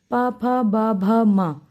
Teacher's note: ओष्ठ, पा, फ, ब, भ, म। हम इनको उच्चारित जब करते हैं तो हमारे दोनों ओठ आपस में मिल जाते हैं, तभी हम इनको उच्चारित कर सकते हैं।